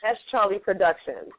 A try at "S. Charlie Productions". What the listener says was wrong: Well, it's actually pronounced S. Charlie, so we actually pronounce the dot in there. So it's S. Charlie.